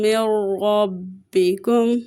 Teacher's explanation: نون ساکن کے بعد را آ رہا ہے تو یہاں پہ ادغام بلا غنہ ہوگا